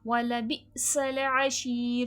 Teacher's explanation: وَلَبِئْسَ الْعَشِيرُ، سین میں سختی سیٹھی کی آواز آئے گی، اور شین کی آواز میں تفشی پھیلاؤ ہوتا ہے. اور شیر میں دیکھیں یا مدہ یا ساکن سے پہلے زیر کھینچ کے پڑھا جائے گا.